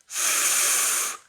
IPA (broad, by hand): f